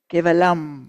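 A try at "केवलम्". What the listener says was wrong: Kevalang. No, you don't close your lips. Kevalang.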